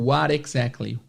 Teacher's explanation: Então você vai ouvir muitas vezes esse what com o som do R de Sara, R de Haro, roro, esse flap T. Então, esse what exactly muitas vezes vai soar como what exactly.